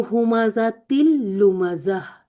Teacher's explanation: बस देख लें कि इसको पूरा पूरा इस तरह मदगम करना है, नून की आवाज खत्म कर देनी बीच में से, ठीक है, पूरा मर्ज हो जाए, ऐसे लगे ये एक ही लफ्ज है।